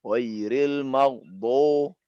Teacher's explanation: tidak boleh ghairil maghdu seperti biasa, tapi do tertahan dulu. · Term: itbaq